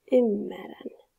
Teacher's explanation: Atëherë, mina ymmeran. Pra, rt-ja nuk ekziston më dhe kthehet në r